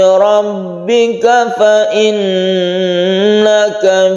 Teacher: tasydid nun guna musyaddadah kita dengungkan, kita tahan